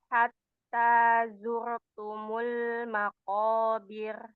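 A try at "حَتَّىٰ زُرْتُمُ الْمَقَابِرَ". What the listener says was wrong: Oh, kofnya tebalkan lagi. Al-maqobir, al-maqobir.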